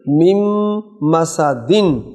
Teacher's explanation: نون ساکن کے بعد میم آ گئی تو نون نہیں پڑھی جائے گی، میم پڑھی جائے گی. میم مسدن، دن کو جب سائلنٹ کریں گے تو دال پر قلقلہ آئے گا